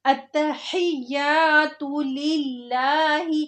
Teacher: اب لفظ اللہ سے پہلے زیر آ رہا ہے تو لفظ اللہ کے نام کو باریک کر کے پڑھیں گے۔ کچھ لوگ اس کو للہ ہی موٹا کر کے پڑھ جاتے ہیں اور کچھ لوگ ہر لفظ کو موٹا کر کے پڑھ جاتے ہیں۔